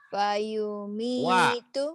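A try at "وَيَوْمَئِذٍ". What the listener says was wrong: Wa. Kedengarannya kayak fa. Wa. Oh, memang iya ya tadi fa ya. Wa ya Bu ya.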